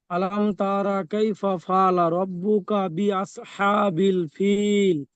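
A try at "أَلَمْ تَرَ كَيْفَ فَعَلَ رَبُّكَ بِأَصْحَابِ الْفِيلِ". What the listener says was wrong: ফিলটা আরো টান দেন, মধ্যে আরজি ওয়াকফি করেন, চারালিপ টান দেন। ফিল।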